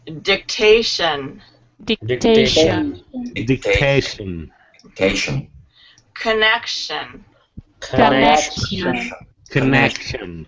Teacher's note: So you're going to raise your voice to emphasize the second syllable.